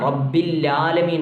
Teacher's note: ചില ആളുകൾ റബ്ബില്ലാലമീൻ എന്ന് ഓതാറുണ്ട്, ഐനെ തന്നെ കളഞ്ഞുകൊണ്ട്.